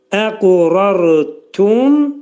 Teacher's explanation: Ra qalın, sükunlu rada qalın oxunacaq. Əqurartum. Mim hərfin dediyimiz kimi yenə ağız yumulur.